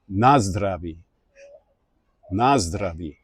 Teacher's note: Czech always stresses the first syllable. So the fact that it's that you will say nazdraví, nazdraví, and it's that first syllable that gets the stress, that may affect you when you speak English.